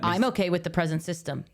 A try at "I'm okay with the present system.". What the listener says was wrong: No, but see, you're putting another emphasis on it that he. didn't. That sounds like a system for presents.